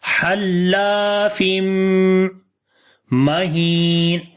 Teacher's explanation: After the tanween, the next letter is mim, which is from yarmalun letters. So we make idgham with gunna. So we long almost two counts here as well.